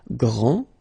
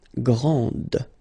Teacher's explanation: Okay, so we've got a little bit the same situation here as we had previously with français and française, because we don't pronounce the final S in français, and it's exactly the same thing. This final D is not pronounced.